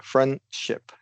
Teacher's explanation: you can always drop that D